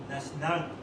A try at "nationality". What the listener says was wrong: Give us the flap. Nationality. Nationality. Becomes a flap here. Nationality.